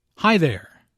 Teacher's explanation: Notice the intonation in this greeting. It rises after hi and falls after there.